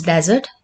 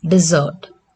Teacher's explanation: in desert, the stress is on first syllable. In desert, the stress is on last syllable